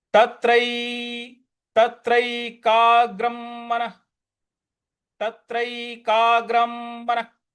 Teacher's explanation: अब यहां पे तत्रैकाग्रं, जो ग के ऊपर जो अनुस्वार है उसका, उसके आगे म है, म का ही उच्चारण लाएंगे